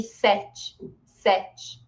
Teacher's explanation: Este e aqui também é aberto e não tem acento, mas ele é sete, sete aberto, tá? Mas vejam que o e final eu pronuncio com som de i.